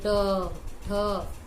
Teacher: जीभ की नोक उलटकर आगे की ओर होती हुई नीचे को फेंकी जाती है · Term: उत्क्षिप्त